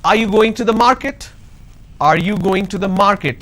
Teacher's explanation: So when I say are you going to the market, there is a rising tone.